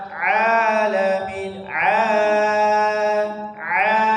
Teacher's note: tapi ketika sudah A itu langsung balik ke rongga mulut enggak ada yang dari hidung